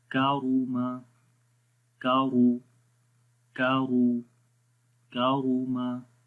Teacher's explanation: کاف کو باریک پڑھیں گے، را کو موٹا پڑھیں گے.